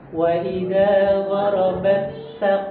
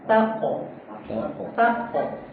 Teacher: Perhatikan ee huruf ta bertemu ko ya. Jadi tidak boleh huruf ta ini tebal ikut tebal ke huruf q.